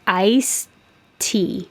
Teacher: i'm not going to release my tongue and say iced tea and have two teas